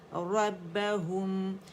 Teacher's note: ہو کے لیے رول کریں گے ہم ہونٹوں کو